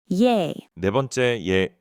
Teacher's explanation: >> E is yah plus e. So you start with yah, then let your mouth stretch sideways towards e.